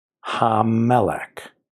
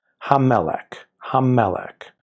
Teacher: the dagesh lands in the middle of the subsequent letter, which means we say that letter twice because it's the dagesh forte.